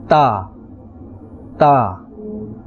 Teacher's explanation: it is pronounced from the tip of the tongue and the roots of the upper front teeth